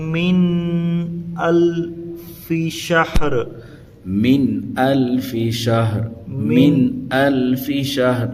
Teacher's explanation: یہاں پر من یہ اظہار ہوگا، الفی کھینچنا نہیں ہے، شہر پڑھنا ہے۔